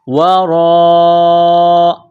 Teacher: ہے، را کے اوپر زبر ہے، را کو موٹا کرنا ہے، را الف مد زبر را، لمبی مد ہے، 4 الف کے لمٹ میں کھینچنا ہے